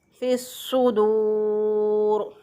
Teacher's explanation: सीन और सौद जो है दोनों का मखरज एक ही है, दोनों के निकलने की जगह एक ही है, लेकिन सौद जो है इसको मोटा पढ़ा जाएगा · वाव साकिन से पहले वाले हरफ पर पेश आ गई, तो वाव मद्दा है, तो इसको एक अलिफ के बराबर लंबा करेंगे